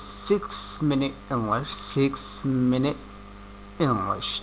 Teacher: টি উচ্চারণ করার প্রস্তুতি নিয়ে আবার ফিরে আসা হয় এবং টি উচ্চারণ না করেই পরের শব্দ শুরু করা হয় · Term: গ্লোটাল টি